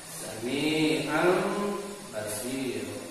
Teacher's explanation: Ketika ada tanwin patah menghadapi huruf ba, dan ba ini adalah merupakan huruf iqlab, maka cara pembacaannya dirubah lagi. Nun ataupun tanwinnya tidak idhar ataupun tidak jelas, tapi kita rubah bentuknya menjadi masukan kepada mim.